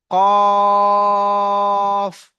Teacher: কফ বলার সময় মুখ গোল করতে হবে আর তিন আলিফ পরিমাণ টান দিয়ে পড়তে হবে